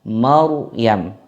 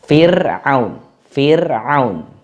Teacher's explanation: Kalau ra yang di Maryam itu tafkhim, Maryam. Kalau di Fir'aun itu tarqiq